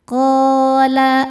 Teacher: Qo hukumnya mad thobi'i zohiri. Sebab ada alif sebelumnya baris fathah. Cara bacanya panjang dua harakat.